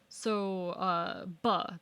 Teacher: that is a plosive that happens at the lips